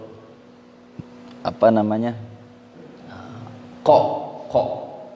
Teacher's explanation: Nah, itu enggak perlu kayak ko sampai mulutnya monyong, enggak, karena dia makhrajnya sebenarnya ada di pangkal lidah ya, di ujung belakang lidah